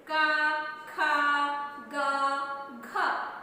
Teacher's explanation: तो क वर्ग में जो चार है वो कहां से उच्चारण हो रहे है कंड से